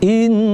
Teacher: Karena huruf nun itu ada tasydid, maka didengungkan.